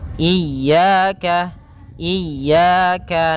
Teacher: Yang kedua memanjangkannya. Kemudian pada lafal ya ada mad thabi'i berupa fathah bertemu alif. Maka dua harakat